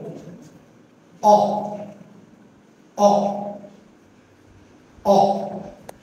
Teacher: এটা হচ্ছে আমাদের জিহ্বার, আমাদের যে জিহ্বা রয়েছে জিহ্বার একদম ব্যাক অফ টাং থেকে, অর্থাৎ জিহ্বার পিছন থেকে উচ্চারণ করবো। আর আমাদের ঠোঁটের অবস্থা হবে জিরোর মতো, এরকম অ অ অ। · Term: অ সাউন্ড